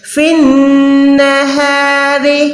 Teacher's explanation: فن نہار، ہا جو ہے ہاتھی والی ہے، را زیر ہے، باریک ہے۔ را کے اوپر اگر زبر یا پیش ہوتا تو را موٹی ہو جاتی